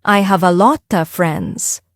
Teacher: Another reason English sounds fast is because native speakers don't pronounce every word clearly. They don't say small words like of, or to very strongly. These little words become very quiet, or even disappear. · Have a lot of becomes have a lotta. The of is very soft, and have a lot of becomes one sound.